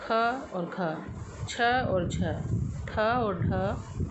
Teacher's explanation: महाप्राण ध्वनियों में हमें बोलने में ज़्यादा समय लगता है, मुख से अधिक वायु निकलती है और बोलने में ज़्यादा प्रयत्न लगता है।